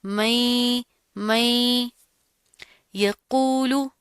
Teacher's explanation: نون ساکن کے بعد حروف یرملون میں سے یا آ رہا ہے تو یہاں پر ادغام ہوگا